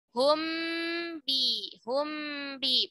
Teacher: Baik mim maupun ba-nya, dua-duanya keluar dari syafah, dari bibir. Karena huruf mim dan huruf ba makhrajnya adalah dari syafatain. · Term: Ikhfa syafawi